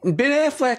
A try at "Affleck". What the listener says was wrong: You said Affleck, like the duck, the insurance duck. Oh, Affleck.